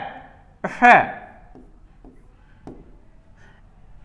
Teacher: ऊष्म, जिसको बोलने से हमारे मुख में घर्षण होता है, घर्षण होता है, उसको बोलते हैं ऊष्म वर्ण।